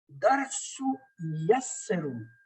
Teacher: تو تنوین کا جو نون کا تلفظ ہے نون غائب ہو گیا, نہ نون قطنی کی شکل میں آیا نہ بولنے میں آ رہا ہے.